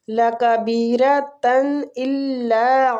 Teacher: ادھر تنوین کا اظہار ہم اس لیے کر رہے ہیں، اظہار حلقی ہو رہا ہے، آگے حلقی حروف حمزہ ہے